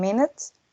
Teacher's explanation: The M, as in minute, which is nasal, voiced, and bilabial.